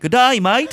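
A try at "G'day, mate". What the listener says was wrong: You did it wrong because you said mate. A's become eyes.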